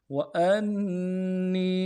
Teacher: اور نون کو اگلے نون کو یا کے ساتھ ملانا ہے، یا مدہ ایک الف دار میں کھینچیں گے